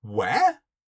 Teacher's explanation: you raise your intonation on that final word